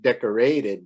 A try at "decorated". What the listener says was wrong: Yeah, don't put stress on the ray. It's decorated.